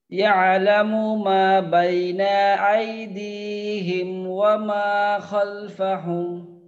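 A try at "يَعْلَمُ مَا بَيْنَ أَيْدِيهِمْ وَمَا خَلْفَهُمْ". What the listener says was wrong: আচ্ছা, মাশাআল্লাহ, ঠিক আছে, ঠিক আছে।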